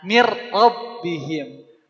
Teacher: untuk lam sama ro dia tidak pakai gunah · Min rabbihim awalnya min. Karena ketemu ro, bunyi n-nya jadi lebur ke huruf ro. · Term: Idam bila gunah, idgham bila gunnah